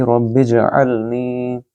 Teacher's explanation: رب اجعلنی، را کو با کے ساتھ ملائیں، را کو پر پڑھیں گے کیونکہ یہ تفخیم ہے، را کے اوپر زبر ہے، اور با کو جیم کے ساتھ ملائیں گے جب جیم ساکن ہو، یعنی کہ کتب جد میں سے جیم بھی ایک حروف قلقلہ میں سے ہے۔